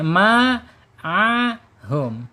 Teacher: Kemudian a di alhalq tenggorokan tengah. Kemudian ha ada di tenggorokan bawah. Kemudian mim asyafatain.